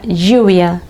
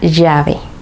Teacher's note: Cuando la L está duplicada en español, el sonido no es como en otras lenguas donde la L duplicada es como una L más larga. En español suena Y.